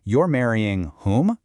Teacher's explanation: Imagine someone says, "I am marrying Jim." An objecting listener might respond by repeating the structure, but replacing the contested information with a heavily stressed interrogative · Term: echo question